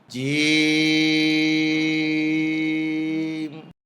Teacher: জিহ্বার মাঝখান উপরের তালুতে উঠবে, শক্ত সবল আওয়াজ হবে